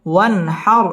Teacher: নুন সাকিনের বামে হা আসছে, হা ইজহারের হরফ, গুন্না ছাড়া স্পষ্ট করে পড়তে হবে